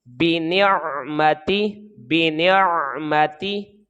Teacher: نون کو عین کے ساتھ ملا کر ادا کریں گے تو یہ غیر قلقلہ ہے، باریک آواز کے ساتھ ہم اس کو پڑھیں گے